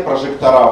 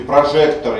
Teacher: окончание а, как правило, ударное, а окончание ы, как правило, безударное